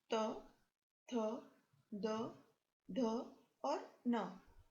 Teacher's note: इन सभी वर्णों का उच्चारण दांत से किया जाता है, इसलिए इन्हें दंत्य वर्ण कहते हैं